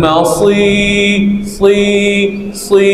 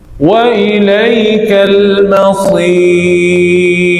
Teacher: sepanjang bunyi sad panjang tu tebalkan